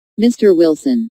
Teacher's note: notice the rising intonation on mr. Wilson which is used to address someone